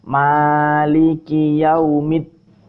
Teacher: Nah, kenapa saya bilang penekanan? Karena di sini hukumnya idgham samsiah. Jadi alnya hilang, langsung masuk ke dal.